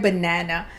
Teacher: only the vowel A in the first and the third syllable make the schwa sound b, n, a, n, The reason why the vowel A in the second syllable does not make the schwa sound is because the second syllable is a stressed syllable.